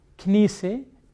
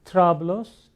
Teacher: the movement of the vowel, that is essential in Arabic on the first letter and doesn't exist in Lebanese